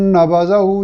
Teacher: ज़ाल को बारीक अदा करेंगे और एहतियात ये करेंगे कि यहाँ ज़ा यानी ज़े जिसको हम उर्दू पंजाबी में बोलते हैं की तरह सीटी की आवाज़ के साथ अदा न करें।